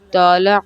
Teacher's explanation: طا میں زور دے کر زبان موڑ کر بھاری آواز کے ساتھ